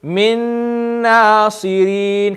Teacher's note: Can you see the sound of the noon, the gunna is still there